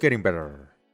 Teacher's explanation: aquí la te suena como una res suave porque se encuentra entre las vocales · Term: r suave